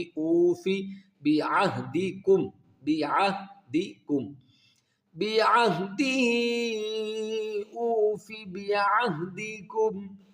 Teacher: واو ساکن سے پہلے پیش ہے، اس کو واو مدہ کہیں گے، اور واو مدہ کو ہم ایک الف کی مقدار کھینچیں گے